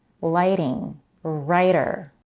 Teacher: The T sound in lighting is a flap T, and so is the one in writer.